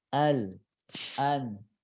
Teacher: huruf lam itu ujung lidahnya mundur sedikit agak ke dalam ya